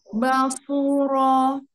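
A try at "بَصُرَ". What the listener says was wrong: Sotnya tebalkan lagi.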